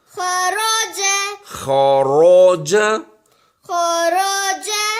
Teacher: رو کو موٹا بولیں گے، خوا بھی موٹا ہے